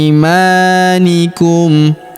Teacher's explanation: Huruf i kita ayun sekali karena terdapat ya sukun di depannya atau kita panjangkan dua harakat ya. Imanikum. Huruf ma kita panjangkan dua harakat karena terdapat alif di depannya.